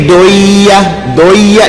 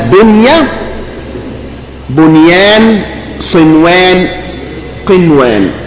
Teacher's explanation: you cannot merge the nun with the ya and wow